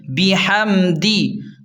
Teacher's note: میم ساکن پر غنہ نہیں کرنا، دال کو جلدی پڑھیں